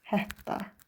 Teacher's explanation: Söz ortasında iki t yan-yana gələrsə, ikincisi d-ya dəyişir.